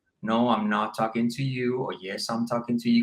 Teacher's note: The Spanish pitch is really flat.